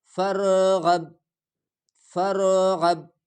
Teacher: با میں قلقلہ کیا جائے گا، اس کو تھوڑا ہلا کر پڑھیں گے